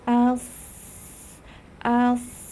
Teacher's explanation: suara mengalir udara mengalir dan suaranya pun berdesis